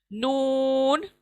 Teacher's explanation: जबान की नोक लगेगी मसूड़ों पर, ऊपर के मसूड़ों को